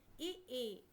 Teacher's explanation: ఇ ఈ ఉచ్చారణ స్థానము తాలు ఆభ్యంతర ప్రయత్నం వివృతం